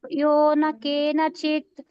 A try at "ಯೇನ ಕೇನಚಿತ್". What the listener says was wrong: ಏನ first correct ಆಗಿ ಹೇಳಿದ್ರಿ, ಆಮೇಲೆ ಯೋನ ಅಂದ್ಬಿಟ್ರಿ. ಏನೇ ಕರೆಕ್ಟ್. ಸಂತುಷ್ಟೋ ಏನ ಕೇನಚಿತ್.